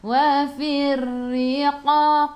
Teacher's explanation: ra kena ada getaran takrir sifat hurufnya